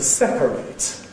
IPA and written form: ˈsepəreɪt (separate)